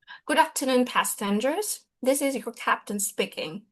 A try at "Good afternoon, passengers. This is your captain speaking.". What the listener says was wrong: Okay, so there should have been a pause here, right? If my memory serves, you didn't pause here.